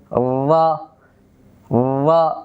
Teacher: আমি যদি উচ্চারণ করি রা যাবার রা, এখানে মাখরাজের সাথে সাথে আমাদের কতগুলো সিফাত খেয়াল করতে হবে। 1 নাম্বার, রা হরফটা উচ্চারণের সময় জিহ্বার আগাটা উপরের দিকে লাগবে খুব হালকাভাবে। আবার ভেতর থেকে আওয়াজ জারি করার সময় খুব কম্পনের সাথে যেন আওয়াজটা হয়।